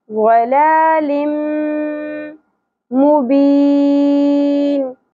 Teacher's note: ضلال تنوین کے بعد دو زیر تنوین کے بعد یمنو میں سے میم آ گیا تو ادغام مع الغنہ ہوگا